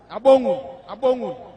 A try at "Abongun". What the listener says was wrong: Abongu. N. The last is N.